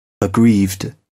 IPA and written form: əˈɡriːvd (aggrieved)